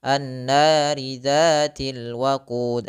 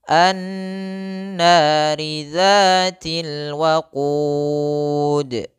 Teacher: Kesalahan yang terjadi tidak memanjangkan gunnahnya, tidak mendengungkannya